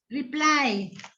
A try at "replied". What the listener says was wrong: There's a t at the end. Replied.